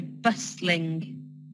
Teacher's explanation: So with bustling, the T, we don't really pronounce that much